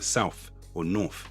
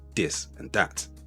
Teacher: instead of this and that, you may hear dis and dat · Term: TH dropping